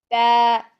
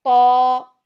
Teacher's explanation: ता बारीक है, तो मोटा है. ता के साउंड आ, ता, ये साउंड, और तो के साउंड तो, ओ, ये साउंड.